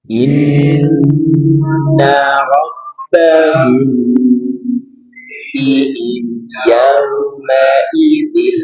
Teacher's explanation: ikhfa syafawi mim sukun bertemu dengan ba tahan dua sampai tiga harakat dan dengungkan